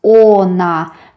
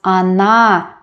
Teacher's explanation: We don't pronounce o when the syllable is not stressed.